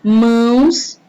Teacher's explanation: ele dá um aspecto anasalado a vogal fica com o som mais nasal